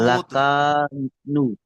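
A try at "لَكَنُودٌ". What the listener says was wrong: লাকানুদ, লাকা টান নেই, লাকানুদ।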